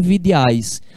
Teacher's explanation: a gente pronuncia essas três vogais juntas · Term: tritongo